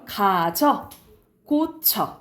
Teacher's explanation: 동사 형용사가 바뀔 때 나타나는 처는 발음도 힘들어. 그래서 얘는 이중모음을 안 하고 단모음, 그냥 처로 발음해요.